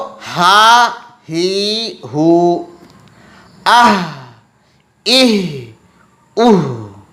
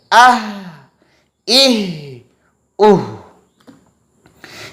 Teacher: इस हा को अदा करते हुए आवाज़ जारी रहेगी, आवाज़ बंद नहीं होगी। आह, इह, उह, इस तरह ज़ोर देकर अदा नहीं करेंगे, बिल्कुल नरमी के साथ कि आवाज़ जारी रहे। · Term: छोटी हा